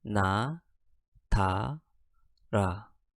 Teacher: 나, 다, 라를 발음하는 경우 혀 끝이 윗 잇몸 부분에 닿는 것을 느낄 수 있습니다.